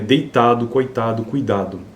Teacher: Há um outro grupo de palavras em que uma sequência de vogal glide deve ocorrer obrigatoriamente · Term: ditongos decrescentes